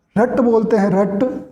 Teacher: और जब हम रट बोलते हैं, रट तो र में जीभ, रे के उच्चारण में जीभ मूर्धा के स्पर्श करती है तो ये मूर्धन्य भी होता है।